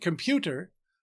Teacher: In the word computer, the heavier stress is on the middle syllable.